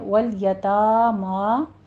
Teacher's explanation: واللام کو سٹاپ کرنا ہے، حرکت نہیں دینی ، یتامہ نہیں کہنا، یتاما فتح قائمہ 2 کاؤنٹ کریں گے،